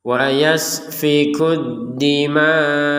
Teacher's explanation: Jadi tetap harus hamzah walaupun tidak ada harakat tetap ada terbaca dima. Jadi tetap harus ada penekanan di hamzahnya biar terbaca.